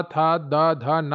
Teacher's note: आप बोलते हैं तो आपकी जीभ दांतों से स्पर्श करती है